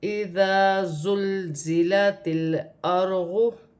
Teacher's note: زا کو سیٹی اور جماؤ کے ساتھ ادا کیا جائے گا